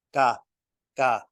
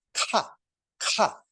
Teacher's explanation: if you do an unaspirated no air is supposed to come out so the paper isn't supposed to move